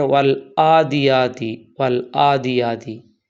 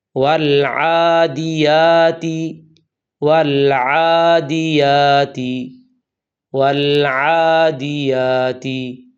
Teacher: سب سے پہلی غلطی یہ ہے، بعض لوگ عین کی جگہ حمزہ پڑھتے ہیں اور پڑھتے ہیں والعادیاتی والعادیاتی۔ یہ عین ہے، اس کا مخرج وسط حلق یعنی گلے کا درمیان ہے، اسے حمزہ نہیں پڑھنا، نہیں تو معنی بالکل بدل جائے گا۔